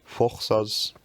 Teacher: Just to show that some words really have changed relatively little. First, the U lowers to an O because of the influence of the A in the next syllable